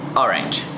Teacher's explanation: In the word orange, the stress is on the first syllable